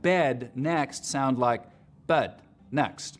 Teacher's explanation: pushes the dress vowel back in the mouth